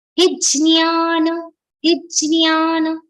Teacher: If we pronounce it jnya, which is the proper Sanskrit form, the aghat of ja will come on he.